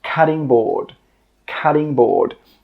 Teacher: I know it's spelt with a T but when we pronounce it, we actually use a D sound.